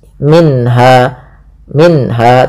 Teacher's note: ada bacaan izhar halqi, yaitu suara nunnya dibaca dengan jelas. Minha, minha, tidak boleh minha, langsung saja.